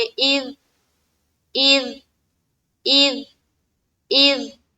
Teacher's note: लेकिन अगर वो 5 हर्फ के अलावा कोई हर्फ है तब हमारी आवाज टकराएगी नहीं, बल्कि वहां पर उस मखरज के ऊपर रुक जाएगी या अटक जाएगी। तो यहाँ पर दाल हुरूफ कलकला में से नहीं है, तो यहाँ पर हमारी आवाज रुक जानी चाहिए।